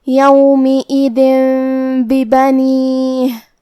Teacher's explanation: با حروف القلب میں سے ہے اور قلب کا معنی ہے بدل دینا، تو ہم یہ تنوین کو میم میں بدل کے اور غنہ کے ساتھ یہ حکم کو ادا کریں گے